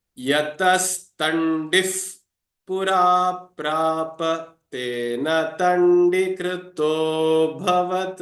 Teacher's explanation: wherever the visarga is followed by pa or pha, in that case, the visarga transforms into a F sound, f. Yatastandif pura prapa tena tandikrito bhavat.